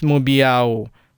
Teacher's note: falling tone on mu, and first tone, which doesn't go up or down but remains steady, on biao